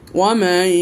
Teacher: দেখেন শেষ অক্ষরটি, শেষ আয়াতটি 8 নম্বর আয়াতটি দেখেন, ওয়ামাই নুন সাকিন, তারপর ইয়া এসেছে, নুন সাকিনকে ইয়ার মধ্যে প্রবেশ করাই দিলাম। ওয়ামাই এবং গুন্না করে নিলাম এক আলিফ পরিমাণ।